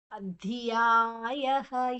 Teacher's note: ಧ್ಯಾಯ ಧ ಮಹಾಪ್ರಾಣ ನಂತರ ಯಾ ದೀರ್ಘ. ಅಧ್ಯಾಯಃ ಯಾದ ನಂತರ ವಿಸರ್ಗದ ಉಚ್ಚಾರಣೆ ಹ.